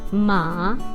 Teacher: That's the second tone going up.